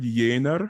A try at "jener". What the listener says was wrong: No, I don't want 2 accents. I don't want jener. Jener.